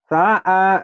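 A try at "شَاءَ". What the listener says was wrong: Sya'a. Shin yang belum keluar tuh. Sya'a.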